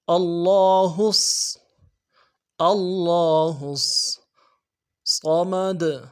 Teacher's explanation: ہا کو نرمی سے ادا کرنا ہے، ہا کو آگے صاد کے ساتھ ملانا ہے